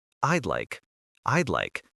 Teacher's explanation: focusing on that D sound is important. It's quick and connected.